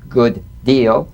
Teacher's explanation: related consonant that it's linking into this is identical and cognate identical D to D good deal you don't need to fully pronounce the first D like good deal prepare the first execute the second good deal